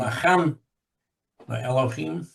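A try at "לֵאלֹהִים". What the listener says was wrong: Lelohim. We don't hear the aleph. You can see that the aleph has no vowel pointing. Usually, we do hear the aleph at the beginning of the word Elohim. But here, following the le here, when the lamed has the tzere, the aleph here becomes silent. So lelohim.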